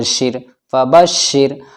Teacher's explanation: را ساکن سے پہلے شین کے نیچے زیر ہے تو یہاں پر یہ را باریک پڑھا جائے گا